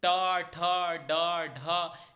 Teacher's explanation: तो इन सभी वर्णों का मूर्धा उच्चारण स्थान होता है। जब भी आप ट, ठ, ड, ढ, इन सारे वर्णों को बोलेंगे तो आपकी जीभ प्राय ऊपर की ओर मुड़ जाएगी और वह मूर्धा को स्पर्श करेगी। · आपकी जीभ प्रायः ऊपर की ओर मुड़ जाएगी और वह मूर्धा को स्पर्श करेगी। इसलिए इन सभी वर्णों का मूर्धा उच्चारण स्थान होता है।